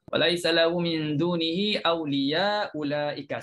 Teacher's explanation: Sama-sama baris depan pun dia digugurkan hamzah yang pertama. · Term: gugur hamzah yang pertama